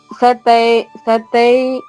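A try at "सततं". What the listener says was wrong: సతతై సతతై రెండు తాళమ్మ.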